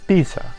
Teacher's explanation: in Italian it's pronounced pizza with a long or double, as I would call it, Norwegian T sound